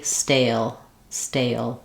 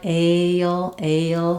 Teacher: Stale again has maybe a little bit of a glide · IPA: /eɪ/